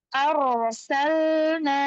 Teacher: Ro sukun, tebal, karena sebelumnya ada hamzah yang berharokat fathah.